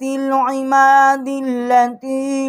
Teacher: اب یہاں پر ہم نے دال جو ہے لام کے ساتھ ہم نے اس کو ملا کر پڑھا ہے